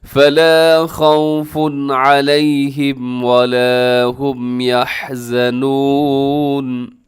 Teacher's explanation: پیش والی تنوین، اور آگے علیہم کے شروع میں عین ہے، تنوین کے بعد حروف حلقی آ گیا ہے، یہاں تیزی سے پڑھیے گا، غنہ نہیں کرنا